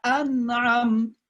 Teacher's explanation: jelas penyebutan nunnya itu. An'am, ya langsung pindah ke ainnya. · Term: izhar